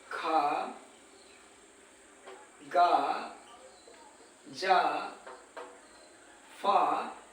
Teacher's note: संघर्ष या रगड़ करके हमारे मुख से उच्चारण होता है ऐसे वर्ड संघर्षी व्यंजन कहलाते हैं तो यह हो गया आपका